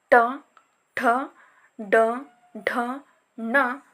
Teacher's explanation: ಗುರುತಿಸಲಾಗಿದೆ ಇಲ್ಲಿ ಮುಂದಿನದಾಗಿ ಮೂರ್ಧನ್ಯ ಅಕ್ಷರಗಳೆಂದು ಗುರುತಿಸಬಹುದು ಮೂರ್ಧನ್ಯ ಮೂರ್ಧನ್ಯ ಎಂದರೆಮೂರ್ಧ ಭಾಗದಲ್ಲಿ ಅಂದರೆ ನಾಲಿಗೆಯನ್ನು ಹಿಂದೆ ಚಾಚಿ ಬಾಯಿಯ ಮೇಲ್ಭಾಗವನ್ನು ಸ್ಪರ್ಶಿಸಿದಾಗ ಉಚ್ಚಾರಗೊಳ್ಳುವಂತಹ ಅಕ್ಷರಗಳೆಲ್ಲವೂ ಮೂರ್ಧನ್ಯ ಅಕ್ಷರಗಳಾಗಿ ಗುರುತಿಸಲ್ಪಟ್ಟಿವೆ